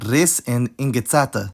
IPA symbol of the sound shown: ɨ